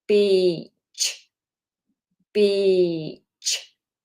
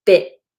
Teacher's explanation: So, we don't want I, we want e. So, really extend that sound. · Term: long vowel